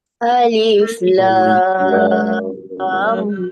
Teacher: Jadi contohnya alif lam ra ni alif dengan ra ni pendek-pendek. Lam tu yang enam. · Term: mad lazim harfi